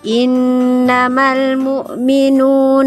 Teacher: mad thabi'i atau mad asli dua gerakan atau dua ketukan